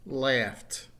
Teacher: laugh ends in an F sound right so the example the past tense is laughed notice the T at the end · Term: T sound